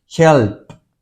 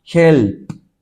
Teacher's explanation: esta P no tiene sonido. Help. Es solo aire que está saliendo. Si se pone la mano acá, help, no necesita pronunciar su voz. · Si usted se da cuenta, esta P no tiene sonido. Help. Es solo aire que está saliendo.